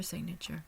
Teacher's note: we'll also see in this phonetic notation that the primary stress is on the first syllable Sig